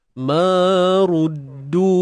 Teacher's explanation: Du panjang. 4 ataupun 5 harakat. Mat jaiz munfasil.